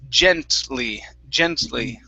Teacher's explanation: there isn't a vowel between the T and the L